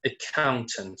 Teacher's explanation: So you see that there are 3 syllables and the stress is on the second syllable.